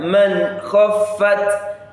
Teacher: The n sound produced clearly before the kha. So anytime you are reciting the Quran and you come across this, intentionally make sure that you are articulating that n sound clearly before you produce the letter of kha.